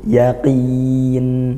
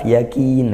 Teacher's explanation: kalau qaf itu di pangkal lidah naik ke langit-langit mulut kita yang lembut.